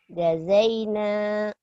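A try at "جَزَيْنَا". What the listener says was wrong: ja keras, jazaina,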